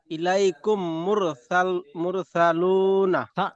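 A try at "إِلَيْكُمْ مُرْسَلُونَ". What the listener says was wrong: সা সা পুরো সিন বার করেন।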